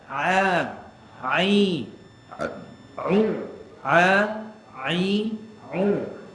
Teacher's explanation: sepatutnya Ain ni tempat keluar dia adalah tengah rengkung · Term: huruf Ain